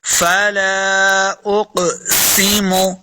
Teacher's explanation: سین پہ سیٹی کی آواز آئے گی